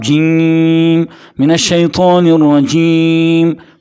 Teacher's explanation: جیم ادا ہوتا ہے زبان کا درمیانی حصہ، زبان کا درمیانی حصہ اوپر تالو کے ساتھ لگنے سے